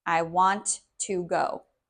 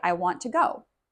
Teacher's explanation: it sounds like there's almost just one T sound